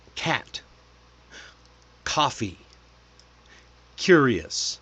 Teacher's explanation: Feel that C at the back of your throat when your tongue touches the roof of your mouth. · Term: hard C